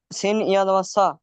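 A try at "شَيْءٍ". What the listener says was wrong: এটা সিন পড়ছেন কেন? শিন তালবেশ্বর মতো মোটা করে উচ্চারণ করেন, নুক্তাওয়ালা। শিন ইয়া জাবার শাই।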